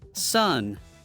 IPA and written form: sʌn (sun)